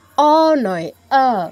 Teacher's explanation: কিন্তু এই গোল করা যাবে না। সংস্কৃত অ এর ক্ষেত্রে ঠোঁট গোল করা যাবে না, ঠোঁট 2 পাশে প্রসারিত হবে। মানে উপর থেকে নিচে নয়, ডান থেকে বামে প্রসারিত করতে হবে।